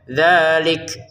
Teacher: Dalnya dua harakat. Untuk kafnya ada letupan nafas sedikit ya.